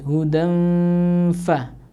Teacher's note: Kalau yang pertama hudan fama, hudan fa, tanwin bertemu dengan huruf fa. Huruf fa di sini salah satu dari huruf ikhfa tadi. Maka cara membacanya ya didengungkan